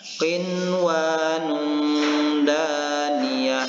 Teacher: Bagaimana cara membaca idgham ghairu kamil ini? Yaitu membacakan bunyi nun yang berbaris sukun ini dengan jelas dan tidak berdengung, atau dibaca izhar